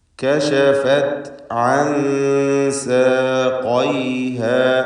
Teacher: അൻ എന്നതിലെ സാക്കിനത്തായ നൂൻ ഇഖ്ഫാ ഹഖീഖി നൽകി മറച്ചു മണിച്ചുച്ചരിക്കേണ്ട അക്ഷരമാണ്. ശേഷം സീനാണ് വരുന്നത്.